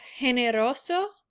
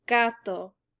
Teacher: in generoso, the G sounds like an H because the E is following it. But in the word gato, it sounds like a normal G sound because there is an A following it.